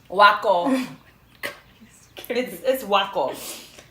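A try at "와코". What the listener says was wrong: Wako. Wako. Wako. Wako. There's no like wah in Korean. There's eh and eh. ah. ah. Eh.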